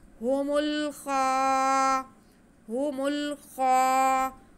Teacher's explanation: आगे खा पे खड़ा ज़बर है, तो इसको हम एक अलिफ के बराबर खींचेंगे। हुमुल खा, हुमुल खा, खा की आवाज़ को थोड़ा मुंह गोल करके पढ़ते हैं ताकि सही से अदा हो सके, खा ना बने बल्कि ये खा रहे।